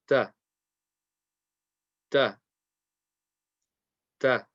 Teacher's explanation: the makhraj of the Ta, remember, the tip of the tongue between the gums and the top two teeth. It needs to be between the gums and the teeth.